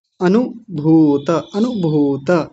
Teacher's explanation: अनुभूत, देखिए पहले छोटे ऊ की मात्रा है, फिर बड़े ऊ की है, तो छोटा ऊ जल्दी बोला जाता है, बड़ा ऊ थोड़ा सा लंबा खींचा जाता है